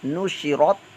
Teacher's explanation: پر زبر پیش ہے تو را پر موٹا پڑھا جاتا ہے، تا ساکن ہے، قلقلے کے بغیر اس کو ادا کریں گے